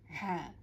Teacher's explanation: হ্যাঁ এর উচ্চারণটা আমাদের গলার মধ্যবর্তী স্থান থেকে এই আওয়াজটা আসবে, হ্যাঁ খুবই মোটা হবে এবং আমার গলার মধ্যস্থান থেকে আসবে হ্যাঁ।